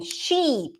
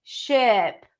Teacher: Sheep, tense E, do you hear it? Ship, lax I. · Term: sheep-ship vowel pair